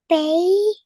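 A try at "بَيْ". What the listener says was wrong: Bay. Very good. So you read the whole bit. Very nice. So that's bay and you made it 2 counts long.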